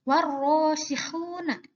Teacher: Ro adalah huruf komariah, maka suara lamnya hilang berganti dengan suara ro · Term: idgham syamsiah